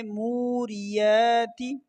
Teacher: را کو باریک پڑھنا ہے اور تا کو زیادہ نہیں کھینچنا